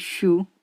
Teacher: In this word, the sh sound is post-alveolar fricative, and the u is the back vowel rounded sound. Because the u is rounded sound, so during the production of sh sound, our lips become rounded so as to pronounce the u sound smoothly. It means some of the features of this u sound are reflected in this sh sound. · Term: anticipatory co-articulation